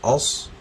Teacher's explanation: صاد کو ایسے پڑھنا ہے، لپس ہمارے گول ہو جانے چاہیے، لفظ کو موٹا کرنا ہے